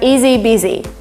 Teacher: But we actually omitted sound H, and we have easy busy.